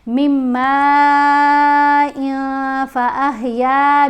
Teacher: اب ہم دیکھ رہے ہیں تنوین کے بعد حرف ہے فا، تو فا حروف فا میں شامل ہے، تو ہم نے اب نون کی آواز یہاں نہیں پڑھنی. تنوین کی جو نون کی آواز ہے وہ ہم نے نون کو کلیئر نہیں پڑھنا، ناک میں چھپا کر پڑھنا ہے